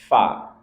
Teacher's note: fa dia punya sifat hamas, keluar nafas